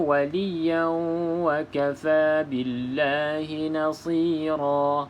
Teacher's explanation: Okey, dengung di sini adalah idgham ma'al gunnah. Kita memasukkan idgham bersama ma'a gunnah, iaitu dengung, masuk ke dalam waw dengan dengung.